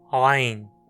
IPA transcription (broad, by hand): ʕajn